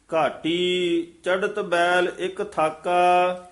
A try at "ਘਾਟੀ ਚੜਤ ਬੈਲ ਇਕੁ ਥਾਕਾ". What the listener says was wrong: ਇਹ ਚੜਤ ਡੱਡਾ ਨਹੀਂ ਬੋਲਣਾ, ਢੱਡਾ ਉਚਾਰਨ ਕਰਨਾ ਹੈ।